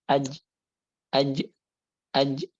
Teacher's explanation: kalau jim tengah lidah ditempelkan ke langit-langit bagian atas tapi nempel. Karena kan sifat syiddah gitu, jadi nempel, kuat.